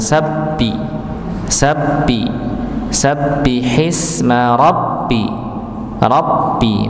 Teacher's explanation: ada huruf ba dengan tasdid pada kata sabbihi dan rabbika. Maka dihentakan